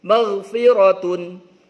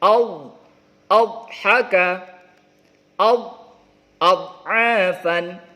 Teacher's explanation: ghain ya. Huruf halqi dia ya di tenggorokan. Dod ini di pinggir lidah dengan geraham atas ya.